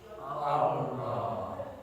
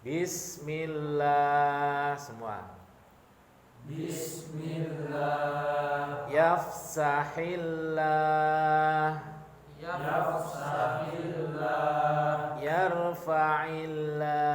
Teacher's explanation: pengucapannya menggunakan ujung lidah menyentuh langit-langit gusi atas dan dibaca tebal